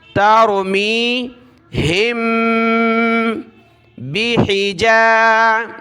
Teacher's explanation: ہا کو ملائیں گے میم کے ساتھ، یہاں ناک میں آواز پیدا کرنی ہے کیونکہ میم ساکن کے بعد یہ با ہے تو وہاں ناک میں آواز پیدا ہوتی ہے